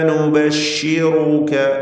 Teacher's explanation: ഇന്ന നുബശ്ശിറുക റാഇന് തഫ്ഖീം കൊടുത്ത് ഉച്ചരിക്കണം. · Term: മദ്മൂമത്തായ റാ